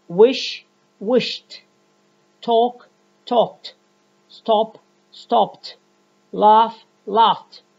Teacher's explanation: All of these words, all of these verbs end with a voiceless sound. And when we add the ED morpheme ending to it, the ED morpheme is pronounced as T. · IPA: /t/